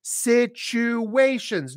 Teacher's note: the T is pronounced as a CH, chop, chop, chop, and there's a hidden W in there.